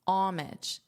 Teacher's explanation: In American English, I have heard people leave out the H, so to turn the H into a silent H and pronounce it as homage.